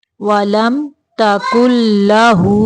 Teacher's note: वलम तकुल्ला काफ पेश लाम कुल। काफ को लाम के अंदर मिलाना है।